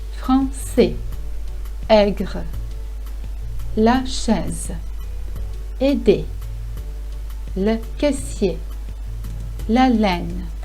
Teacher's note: It is always pronounced as an open sound E, like in the word get. Though there are some nuances in pronouncing, if you just say E, every French will understand you.